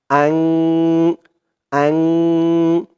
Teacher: ইকফা গুন্নাটা নাকের ভেতরে লুকিয়ে করতে হয়